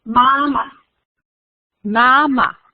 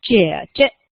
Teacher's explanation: So usually when you see that words coming with two exactly the same pronunciation, so usually the second one, this is the one that repeats the first one. So the second one that repeats the first one usually comes with that neutral tone.